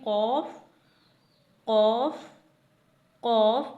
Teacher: कौफ हरूफ मुस्तालिया में से है यानी मोटा पढ़ा जाने वाला हरूफ है, तो इसे मुंह को गोल करके पुर करके पढ़ेंगे